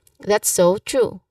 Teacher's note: Now, pronunciation wise, you stress on true. That's so true.